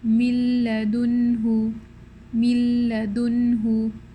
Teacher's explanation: no trace of noon or ghunna. Okay, mim kasra lam sukun mil, this is what's happening, so there's no noon at all. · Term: idgham bi ghayr ghunna